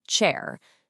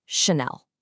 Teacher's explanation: It's not a hard ch sound, like in the word chair. The French ch is a really soft sh sound, so it's just Chanel.